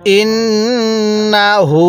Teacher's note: এই হায়ের মধ্যে আমরা এক আলিফ টান দেব, কারণ হায়ের উপরে এরকম উল্টা পেশ থাকলে আমাদের এক আলিফ টানতে হবে, তাহলে ইন্নাহু।